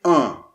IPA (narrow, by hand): œ̃